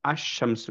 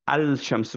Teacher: রেড যে দুইটা সেটার ক্ষেত্রে আমরা কি করলাম একচুয়ালি সাদ্দা করলাম লামটাকে বাদ দিয়ে একচুয়ালি পরের লেটার সাথে সাদ্দা করলাম আশামসু এরকম পড়লাম আল শামসু পড়িনি আর রজুলু পড়লাম সিমিলার রিজনে